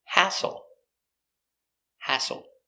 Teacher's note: Stress on the first syllable. Hassle.